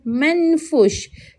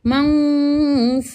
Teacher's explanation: Hukum yang ada dekat sini adalah iqfa hakiki. Kita nak kena sembunyikan bunyi nun itu dengan cara kita dengung. Maka dekat sini kita tidak boleh baca manfus tetapi manfus. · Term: ikhfa hakiki